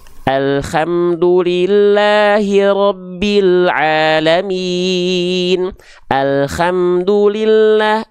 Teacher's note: Nggak bersih H kecilnya teh kayak ada kresek-kreseknya.